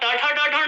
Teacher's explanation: जब ट ठ ड ढ ण आप बोलते तो आपकी जीभ आगे से टर्न टर्न होकर के ऊपर टकराती है